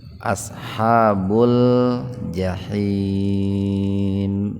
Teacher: Nah, mad arid lisukun. Karena ada mad tabi'i jatuh pada waqaf ya, tanda berhenti. Dibacanya panjang mulai 2 sampai 6 ketukan. · Ada huruf lam atau lam ta'rif bertemu dengan huruf qamariyah. Apa huruf qamariyahnya? Jim. Nah, itu. Maka huruf lamnya itu dibaca idhar jelas. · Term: idhar qamariyah